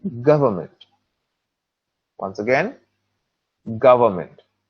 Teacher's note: And the stress is on the first part, which is gov.